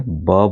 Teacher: जब भी बोलेंगे तो आपके ओठ दोनों ओठ एक दूसरे को छू रहे होंगे। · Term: ओष्ठ